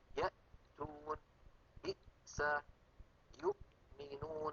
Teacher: فنجد بأن المخرج قد انقفل تماما عند نطقنا للهمزة الساكنة. بالهمزة المتحركة الأمر معكوس، فإن الوترين الصوتيين يكونان ملتصقان ثم يبتعدان، كقولنا آمن، وقولنا أوتوا، وقولنا إن. · لما نقول يأ فإن الوترين الصوتيين يلتحمان ويلتصقان وينقفل المخرج تماما